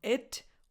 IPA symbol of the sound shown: ɪ